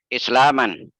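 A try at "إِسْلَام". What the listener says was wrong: Coba jangan dimansubkan. Coba netral aja coba. Islam. Bahasa Arab itu supaya gampang, supaya apa namanya? Supaya akrab dengan kuping, umumnya disukunkan.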